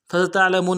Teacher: سین کی سیٹی باریک ہوگی